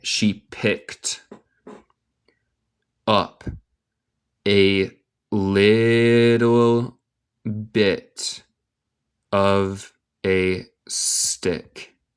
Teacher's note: Suena como no hay ed, en vez de esto hay un t.